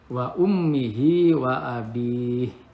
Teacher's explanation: setiap mim ada tasid, berarti gunah didengungkan 2-3 harokat